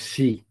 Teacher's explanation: De ahí fuera, la S y la I siempre se van a pronunciar shi